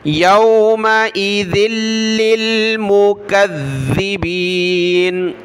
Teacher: ذال پر زبان نکالیں گے، یومئذ للمکذبین ، ذال پر یہاں زیر ہے، مکذبین، فویل یومئذ للمکذبین الذین